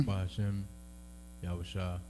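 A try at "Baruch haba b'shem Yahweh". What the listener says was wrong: Barak. You know, I don't want you to say Barakatah so it sounds like one word. Yeah, I want you to break it up.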